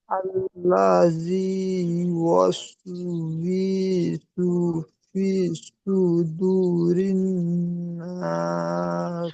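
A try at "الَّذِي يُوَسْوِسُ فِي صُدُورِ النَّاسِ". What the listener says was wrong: আল্লাযী ইউওয়াসবি বলে টান দিচ্ছেন, ওয়াউজের বি হারাকাতে টান হয় না, ইউওয়াসবিসু বলেন। বি টান, বলেন আল্লাজি, লা টান হবে না,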